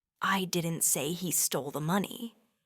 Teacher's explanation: stressing didn't means that someone else said it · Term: stresses